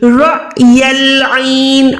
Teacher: یہاں پر ہم نے الف پہ جھٹکا لگانا ہے